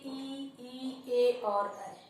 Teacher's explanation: जैसे हमारी जीभ है तो जो जीभ का अगला भाग होता है, जब हम ई का उच्चारण करते हैं तो हम अपने जीभ के अगले भाग का प्रयोग करते हैं। तो इसी वजह से इसे कहा गया है अग्र स्वर।